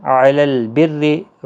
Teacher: را زیر کی وجہ سے باریک ہوگا